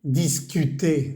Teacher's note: la R no se pronuncia